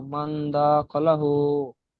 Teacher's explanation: দা টান হবে না, খ টান হবে না, লামও টান হবে না, শুধু হা উল্টো পেশ হু এখানে একালি পরিমাণ টান হবে